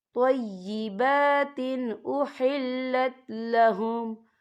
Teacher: یا دیکھیں طیبات، با کے پر کھڑی حرکات ہے تو ہم یہاں 2 یا 3 حرکت کے برابر کھینچیں گے، اور آگے دیکھیں طیبات، تا کے نیچے تنوین ہے، تنوین کے بعد جو ہے حمزہ آ رہا ہے، اور حمزہ جو ہے حروف ہلکی کا ورڈ ہے تو ہم یہاں اظہار کریں گے، ہم اسے بنا غنّے کے پڑھیں گے